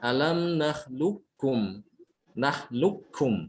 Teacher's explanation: Di sini diidghamkan ya, qaf dengan kaf dibacanya alam nahlukum. Nahlukum, seakan-akan qafnya hilang.